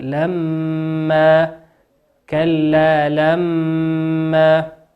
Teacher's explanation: الميم مشددة في قوله لما تقف فيها بمقدار حركتين وتغن مقدار لما كلا لما.